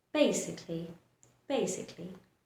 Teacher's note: Now here, in most words, when there are two vowels, you're supposed to make the sound of the first vowel and ignore pronouncing the last vowel, just like in this word, basically. See, I'm stretching the first vowel and ignoring the sound, completely ignoring the sound of the last vowel